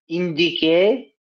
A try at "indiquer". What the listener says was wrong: ইন্দিকে না, এটা আদিকে কি হবে?